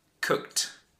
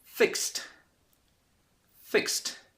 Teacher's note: the verbs have this strong T sound at the end fixed and cooked